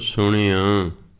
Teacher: ਅਣਾਣੇ ਤੋਂ ਜਿਹੜਾ ਅਗਲਾ ਅੱਖਰ ਨੂੰ ਕੰਨਾਂ ਲੱਗਾ ਹੁੰਦਾ ਉਹ ਆਪਣੇ ਆਪ ਹੀ ਨੱਕ ਰਾਹੀਂ ਬੋਲਿਆ ਜਾਂਦਾ।